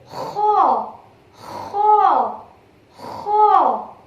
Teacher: In this letter, you are scratching your back of your throat.